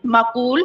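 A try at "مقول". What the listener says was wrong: माकूल नहीं, मकूल।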